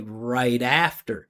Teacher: Keep the vibration going. Use consonant to vowel linking and move the flat T over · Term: flap T